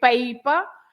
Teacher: you say paper and you stress pay paper and we say papel papel because the last letter is